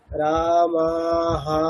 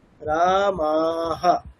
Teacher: রামা দুটো উচ্চারণ হবে দীর্ঘ। রামা হাটা কিন্তু আর দীর্ঘ হবে না। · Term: বিসর্গ